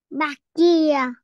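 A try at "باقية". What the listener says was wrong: Baqi, baqiya, baqiya. Okay, so what is this sound? Because I hear it as like key. Baqiya.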